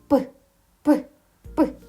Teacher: Цей звук не можна ні потягнути, ні проспівати. Він ніби вибухає. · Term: звук П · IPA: [п]